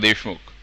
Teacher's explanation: The k part is sort of gone.